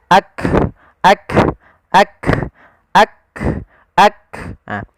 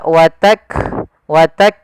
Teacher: Sedangkan Hamas jaroyanun nafas, mengalirnya nafas. Sehingga ketika melafalkan huruf kaf yang perlu kita bunyikan dulu yang syiddahnya yaitu kita tahan suaranya baru kita alirkan nafasnya